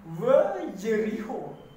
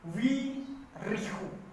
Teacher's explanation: sebelum huruf yod, awalan we berubah menjadi wi